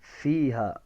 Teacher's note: اوپر کے دانت اور نچلے ہونٹ کا اندرونی کنارہ, یہاں سے فا ادا ہوتا ہے. فیہا فاکہۃ, فاکیہ یا نہیں ہے, ہا ہے, اس کو ہا ہی ادا کرنا ہے.